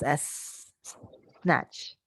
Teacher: we do have the frictive sound of s because we make the s sound you can feel air come on your mouth